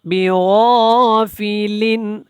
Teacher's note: لن کے اوپر اخفا نہیں کرنا، یہاں پہ عین حروف حلقی میں سے ہے